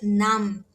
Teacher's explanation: se você quiser lembrar do som da vogal a do coreano, né, é esse o som de a mais aberto